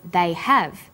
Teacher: forms when they are unstressed the h sound is dropped but when stressed the h sound is pronounced